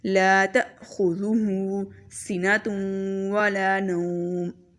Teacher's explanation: ذال کی آواز میں سیٹی نہیں ہونی چاہیے، خو بہت موٹا پڑھیں گے